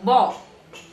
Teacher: For that, my tongue has to be, because it is ba, it's not ba, ba, ba, ba. If it is a ba, my tongue has to be backward. A is a back sound, back vowel.